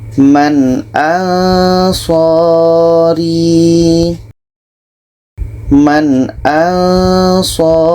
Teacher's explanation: Nun jelas, hamzah jelas, dan tidak ada dengung. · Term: izhar halqi